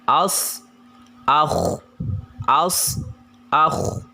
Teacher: Kemudian desis yang paling besar terletak pada huruf shad dan juga kha, sehingga terdengar bunyi als, akh, als, akh. Dia harus bulat suaranya dan juga disertai dengan desis yang kuat.